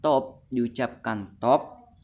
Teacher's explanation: top diucapkan top dengan T apikodental